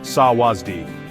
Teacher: Sawasdi is pronounced sawasdi, with the emphasis on the second syllable.